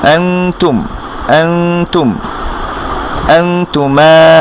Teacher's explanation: নুন সাকিনের পরে তা আসছে, সেজন্য আমরা গুন্নাটা করছি ইকফা।